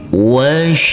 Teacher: Di sini ada huruf shin yang bertasydid. Nanti kita tekan dan kita tahan saja dengan 2 harokat.